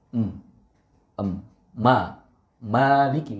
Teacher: Meme ini adalah huruf yang keluar dari keluarga kedua bibir dan ketika kita melakukannya itu menyentuh terlebih dahulu antara bibir atas dan bibir bawah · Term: huruf mim